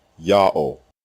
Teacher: The only consonant heard in God's name is the first letter Yah. The second letter Ha is silent. It assumes the sound of the previous vowel and closes the first syllable.